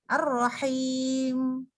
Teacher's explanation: harus emnya tuh tahan dikit tuh setengah harokat